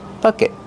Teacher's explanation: Use a stop T at the end.